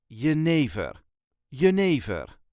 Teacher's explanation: there is a very slight emphasis on the second syllable